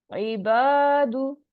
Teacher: इबादु, बा पे जबर है, उसके बाद अलिफ आ रहा है तो अलिफ मद्दा हो रहा है, टू काउंट स्ट्रेच करेंगे। दाल के ऊपर पेश है तो यहाँ सिर्फ वन काउंट स्ट्रेच होगा।